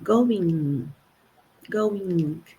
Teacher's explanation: E esse G final ele dá uma modificada de leve. A gente não escuta o G.